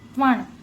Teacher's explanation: त्वा वर जो अनुस्वार आहे त्याचा उच्चार न करायचा आहे